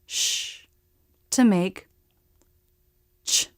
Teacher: For the ch, we're combining the t, t, and the sh, sh, to make ch. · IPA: [tʃ]